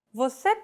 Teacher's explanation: it like it's basically a statement like the previous phrase vus with a question mark at the end and a raised intonation